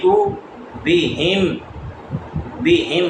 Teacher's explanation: ہا حلق کے نیچے والے حصے سے سینے کی طرف سے ادا ہوگا